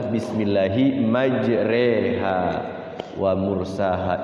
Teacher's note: tulisannya ro dibaca re jadi dia ri tidak ro tidak tengah-tengah miring bacaan fathah mendekati kasrah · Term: imalah